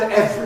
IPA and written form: ˈevri (every)